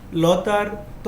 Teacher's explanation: লতার ত হচ্ছে দন্ত দন্তে উচ্চারিত